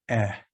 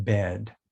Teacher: the short e e as in bed so it's the lower mid